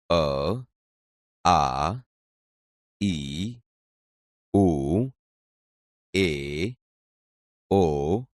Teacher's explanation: આપણે અ, આ, ઈ, ઉ, એ, ઓ વગેરે બોલીએ છીએ ત્યારે આ ધ્વનિ મોઢામાં અવરોધાયા સિવાય સીધો જ સ્વર પેટીમાંથી આવતો અનુભવાય છે